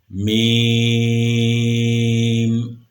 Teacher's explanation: اوپر اور نیچے کے دونوں ہونٹوں کا خشک حصہ جب آپس میں ملتا ہے تو میم ادا ہوتا ہے، میم۔ اور جب اوپر اور نیچے کے دونوں ہونٹوں کا تر حصہ آپس میں ملتا ہے تو با ادا ہوتا ہے، با۔